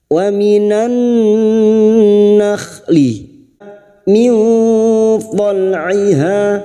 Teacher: Wa minan nakhli min tal'iha nun sukun bertemu po ikfa hakiki. Kita samarkan bunyi nun sukun dan mendengung selama 3 harokat.